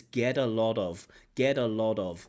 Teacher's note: That t also becomes a d, which is very common in American English.